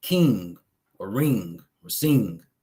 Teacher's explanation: NG is a nasal guttural throat sound.